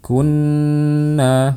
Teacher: di sini ada nun bertasydid, dibaca dengan gunnah yang panjang. Ini disebut gunnah musyaddadah, yaitu gunnah yang terdapat pada huruf nun yang bertasydid.